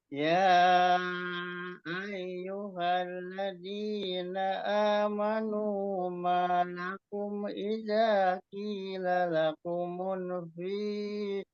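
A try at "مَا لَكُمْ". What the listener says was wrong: maknya juga malah nambah. Maknya malakum itu kecepatan maknya ada matabi'i.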